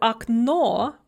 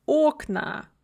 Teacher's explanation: stressed on the second syllable in the singular, and then the stress shifts to the first syllable in the plural